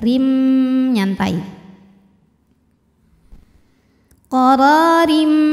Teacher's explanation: Cara bacanya dipanjangkan ro-nya 2 harokat. Qararim, huruf ro dibaca secara tarqiq karena harokatnya kasrah tanwin ya. Maka dibaca ro-nya ini tipis tanpa harus menaikkan pangkal lidah ya.